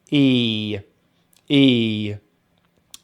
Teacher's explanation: so we start with the t sound and then we have the long vowel sound e which we make by spreading the lips dropping the jaw just a little bit and pushing the tongue forward in the mouth so the sound comes from the front of the mouth e